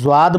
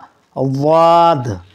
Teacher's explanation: मखरज है ज़ुबान की बाईं करवट दांत के दाढ़ में लगकर अदा होगा। इसको ना ज़्वाद पढ़ना दुरुस्त और ना दुआद पढ़ना दुरुस्त।